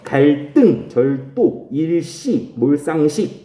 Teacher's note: 한자어 다음에 한자어 리을 받침 다음에 연결되는 다사조는 된소리로 발음한다